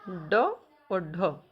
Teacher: जिनके उच्चारण में जिह्वा की नोक झटके से नीचे गिरती है तो वह उत्क्षिप्त ध्वनि कहलाती है · इनका उच्चारण स्थान क्या है, मूर्धा से बोले जाते हैं ये, पर कैसे, झटके से।